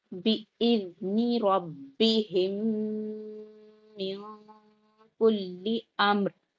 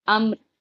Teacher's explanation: امر، یہاں پہ را پہ ہم قلقلہ نہیں کریں گے، امر کر کے را پہ جزم لگا دیں گے تو ہلکا سا را کی آواز اینڈ میں آئے گی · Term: رائے ساکنہ